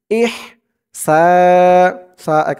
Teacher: এই হার উচ্চারণটা গলার ভিতর থেকে চিকুন হয়ে বের হবে